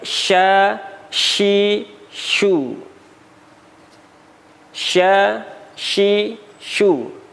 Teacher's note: Bibirnya tidak mekar. Bibirnya hanya bulat ketika huruf shin berharokat dhammah. · pengucapannya tengah lidah kita bertemu dengan langit-langit. Cara pengucapannya sya, sya, bukan sya, bibirnya tidak mekar, ya, bukan sya sekali lagi.